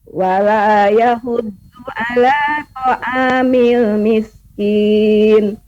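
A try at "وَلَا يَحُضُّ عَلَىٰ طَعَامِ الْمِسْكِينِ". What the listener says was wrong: ya cukup Ibu mengucapkannya Ambillah Ya lumayan cukup bagus ya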